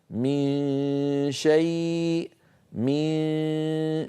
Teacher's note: فالآن يخرج صوتان: غنة من الخيشوم لها الغلبة والهيمنة، وصويت من الفم بسبب أن مخرج الشين مفتوح ليس فيه انغلاق للمخرج، فيبقى صويت.